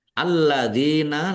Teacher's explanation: Alladzina, lamnya ada tasdidnya, dibaca double.